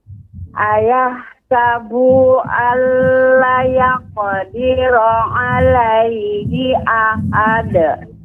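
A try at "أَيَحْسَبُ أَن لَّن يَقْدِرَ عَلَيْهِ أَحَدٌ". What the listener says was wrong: Ulangin, Bu, bunya dipendekkan. Ya, di ayat nomor 6 tadi di lamnya dipendekkan ya, Bu. Jadi yaqulu Yaqulu lu yaqulu jangan yaqulu, jangan dipanjangkan.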